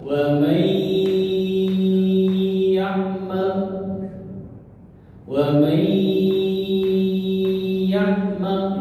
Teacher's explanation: Bigunnah, maka masuk melebur ke huruf depannya. Nun sukun masuk ke ya atau melebur ke ya